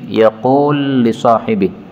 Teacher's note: lam ketemu lam yaqulu li sahibi boleh idgham menjadi yaqul li sahibi